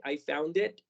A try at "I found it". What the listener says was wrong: I found, y no escuché el sonido de la D, que en este caso en específico es muy importante. Vamos a marcarlo más como D. I found it.